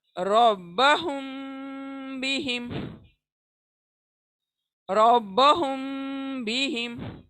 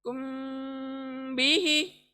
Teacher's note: मीम के ऊपर 1 second के लिए रुकना है, तभी ये आवाज छुपाई जाएगी नाक के अंदर। तो मीम के ऊपर रुक जाएं पढ़ते वक्त, रब्बहुम बिहिम, रब्बहुम बिहिम।